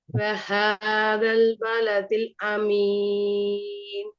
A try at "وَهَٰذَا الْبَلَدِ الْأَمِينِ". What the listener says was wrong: கொஞ்சம் ராகம் படுத்துங்க. பேர் சவுண்ட் சரி, ஏட சவுண்டும் சரி. ராகம் படுங்க.